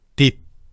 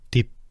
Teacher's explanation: 우리 귀에는 똑같이 들리지만 사실 1번은 유성음으로 발음했고 2번은 무성음으로 발음했어.